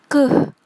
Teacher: Lalu fonem K tempat artikulasinya di velar. Velar itu langit-langit lunak. Cara artikulasinya adalah plosif atau letupan.